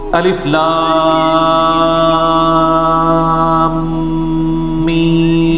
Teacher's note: 3 سے 5 الف تک کھینچنا ہوگا، لام کو بھی اور میم کو بھی، اور لام اور میم چونکہ اس کا جنکشن ہے تو میم کے اوپر تشدید بھی ہے، غنہ بھی ہو رہا ہوگا اس اعتبار سے کہ میم کی آواز۔